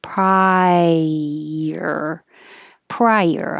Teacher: This vowel is I, so you have to rise.